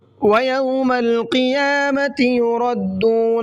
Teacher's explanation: قیامتی کے قاف کو منہ بھر کے پڑھنا ہے، یردون کا را کو بھی منہ بھر کے پڑھنا ہے.